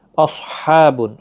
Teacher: اصحاب، صاد ساکن کو ہلانا نہیں، موٹا بھی پڑا جائے گا، حروف مستعلیہ کا حرف ہے۔ ہا وسط حلق والا ہے، خاص خیال رکھیں، نرمی کے ساتھ نہ ادا کریں، دو چشمی ہا نکل جائے گا، تو اس کے اوپر کھڑا زبر بھی ہے، ایک الف کی مقدار کے برابر کھینچ کر بھی پڑھیں۔